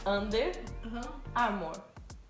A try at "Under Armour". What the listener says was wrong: Armour. Você falou muito amor. Armour. Yeah, Armour. Não, Armour. Armour.